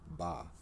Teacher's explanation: the ba sound is a voiced bilabial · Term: B sound